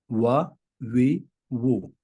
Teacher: وا دونوں ہونٹوں کی گولائی سے ادا ہوتا ہے